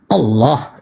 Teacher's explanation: Allah itu ketika lamnya ada dua dan ada tanda tasdik, maka lidah kita diletakkan ke langit-langit sebelah tengah.